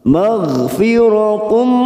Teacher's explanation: Ada huruf ghain sukun, hati-hati jangan dipantulkan karena bukan qalqalah, maka kita tahan.